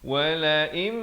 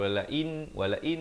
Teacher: Kedua-duanya samalah, idgham bi ghunnah dengan ma'al ghunnah itu, ya. Wala im terus masuk beserta dengan dua harakat. Bukan macam wala in itu jadi izhar. Di sini idgham bi ghunnah.